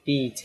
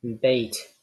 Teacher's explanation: the difference between beat and bait, the E sound and A sound would be highness, the height of the tongue.